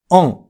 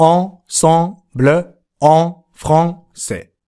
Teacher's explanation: さにやってみてくださいね。そしてそのあに口を開けたまま発音する尾母音のんをつけます。オン。ほら、アンとオンの中間のような曖昧な感じの音に聞こえませんか？オン。あくまでもアンと発音しているのですが、 喉の奥でくぐもった声でオンと言っているのでオンに聞こえるわけなんですね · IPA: ɑ̃